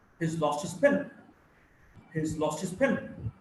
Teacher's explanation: So you would hear basically two words, lost and pen. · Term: sentence stress